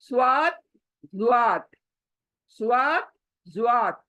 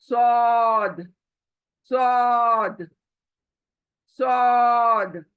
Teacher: जब आ करके आवाज आती है तभी समझ लेना चाहिए ये मोटा है, मोटा पढ़े जाने वाला लेटर है